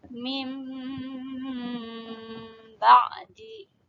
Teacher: Iqlab yaitu apabila nun mati atau tanwin bertemu dengan huruf ba. Dalam bacaan ini, bacaan nun mati atau tanwin berubah menjadi bunyi mim.